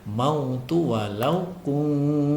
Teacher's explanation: nun sukun bertemu dengan ta, maka cara membacanya disamarkan disertai dengan dengung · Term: ikhfa hakiki